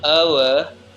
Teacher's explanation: Pronunciation of the word our begins with a vowel quality similar to o, goes on to a glide toward the back close rounded area, for which we use the symbol u. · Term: triphthong